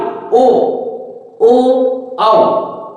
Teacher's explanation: ओ और औ में देखो हमारे होठ क्या हो रहे हैं? गोल हो रहे हैं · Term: वर्ताकार